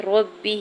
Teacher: را کے زبر کو با مشدد کے ساتھ ملاتے ہوئے پڑھیں گے اور با کی زیر کو کھینچنا نہیں ہے